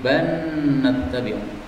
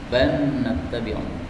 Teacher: Bal nattabi'u bisa dibaca idgham menjadi ban nattabi'u. Jadi lamnya lebur menjadi nun ya.